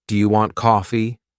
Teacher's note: when I ask a question, my voice often goes up at the end. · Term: intonation